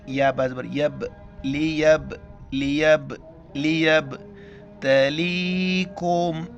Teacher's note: با کے اوپر کلکلہ کریں گے